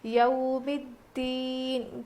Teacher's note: اب یہ یو نہیں ہے بلکہ یو ہے، حروف لین ہے نا، اس لیے ہم نرم آواز کے ساتھ جلدی ادا کر کے پڑھیں گے